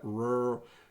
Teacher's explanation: So you'll hear it almost just sounds like rural, but it's rural area. Where's my tongue when I say that? Rural. It's pulled back and up a little bit. It's not touching the roof.